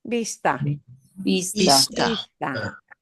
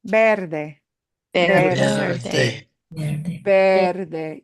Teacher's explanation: there is some tooth and lip contact in English, but that will not happen in Spanish. Yeah. It won't be V, it'll be ve.